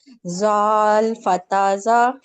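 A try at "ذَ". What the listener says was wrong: अभी भी आपकी आ रही है सीटी, लेकिन आपने इसको सुन के प्रैक्टिस करना है, ठीक है?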